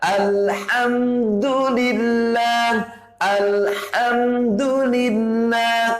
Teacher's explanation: Wastal halqi ini huruf yang keluar dari tengah-tengah tenggorokan